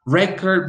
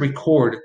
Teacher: the noun which usually receives the stress on the first syllable and the verb which usually receives the stress on the second syllable